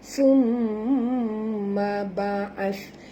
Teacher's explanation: Huruf tha kena sebut betul-betul, bukan bacaan dia summa tapi baca dengan sentil lidah.